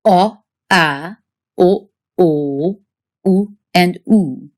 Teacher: fall into three categories there's one big category of back vowels these are vowels made with your tongue sitting near the back of your mouth